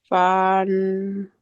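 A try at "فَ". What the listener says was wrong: Don't stretch. Fun.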